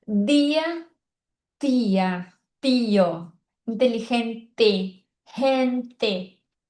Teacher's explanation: Eu sei que tem algumas regiões do Brasil que fala o T igual no espanhol, mas tem muitas outras regiões que a gente fala inteligente. Então, esse ti não existe no espanhol, por isso que a gente fala inteligente. T é bem forte também.